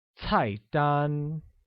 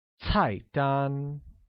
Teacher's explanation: pronounced with a falling tone on the first A and a high level tone on the second